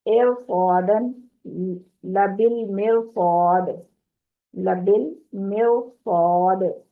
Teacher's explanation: قاسن مر صادن پھر قاتن ایر صادن لبل مرصاد، لبل مرصاد، اگلا حرف پر ہے اس لیے را ساکن بھی پر ہو جائے گی